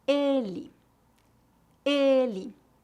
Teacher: e fechado repita depois de mim ela ela ele ele excelente a letra e em final de palavras é comumente pronunciada como um I fraco